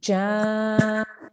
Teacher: we need to elongate this for about 5 to 6 seconds before we join to the letter with the shadda, right? So we have ja. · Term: mad al-kabir